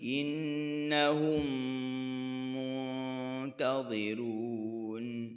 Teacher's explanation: innahum mim mati bertemu dengan mim, idgham mimi